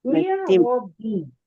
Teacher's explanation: نون ساکن کے بعد را آیا، را کو موٹا کریں گے، اسے ملائیں گے